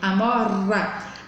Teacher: A língua treme no céu da boca. Então é um R só.